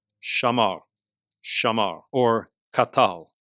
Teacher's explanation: The most common is the A-class vowel pattern, where you get a long A-class A-type vowel in the first syllable, kamatz, and a short A-class A-type vowel in the second syllable, patach